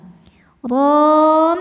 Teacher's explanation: Ra dibaca tafkhim karena berharakat fathah maka dibacanya tebal.